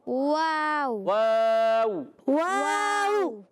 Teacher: واو کی ادائیگی ہونٹوں کی گولائی سے ادا ہوگا